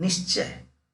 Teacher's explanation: विसर्ग का आधा तालव्य स में परिवर्तन